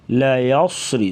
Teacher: را کے نیچے زیر ہوگی تو را کو باریک پڑھا جائے گا